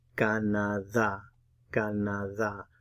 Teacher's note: Put the stress on the last syllable where you see the accent mark in this word.